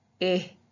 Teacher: when you say that short eye your tongue is in the middle you're showing off your teeth a little bit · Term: short i sound